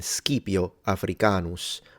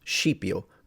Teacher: the s c was a SK like in skipio Africanus but then that becomes shio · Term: palatalization